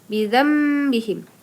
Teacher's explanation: mim kecil di sana disebut dengan iqlab iqlab iqlab Nah jadi iklab dia harus dengung ya berubah menjadi mim